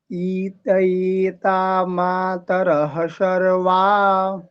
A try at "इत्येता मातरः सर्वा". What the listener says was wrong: ईत ये बड़ी नहीं है ना, बड़ी ई नहीं ना है। हाँ, इतये नहीं, इत्ये। इत्ये। इत्तये कहेंगे तो डबल त आ जाएगा बाबू। इत्ये।